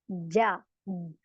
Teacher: जब मैं जा बोल रही हूं तो मेरी जबान ऊपर चिपक रही है जा अगर मैं जा परही स्टॉप हो जाऊ हदा ना बोलू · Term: जीम